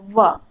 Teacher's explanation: व का उच्चारण में दंत और ओष्ठ का प्रयोग हो रहा है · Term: दंतोष्ठ